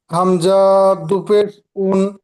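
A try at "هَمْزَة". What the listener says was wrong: আচ্ছা, হামজা বলে টান দিয়েছেন আপনি, হামজা বলে টান দিয়েছেন না, হামজা।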